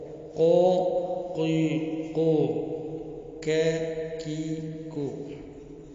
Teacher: قاف اور کاف کوے سے نکلتے ہیں · یہ کوے کے متصل زبان کی جڑ سے ادا ہوتے ہیں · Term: لحاتیہ